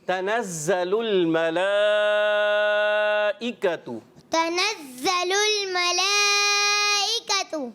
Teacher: زا کو کیسے ادا کرنا ہے دونوں دانتوں کو ملا کر زا سیٹی سے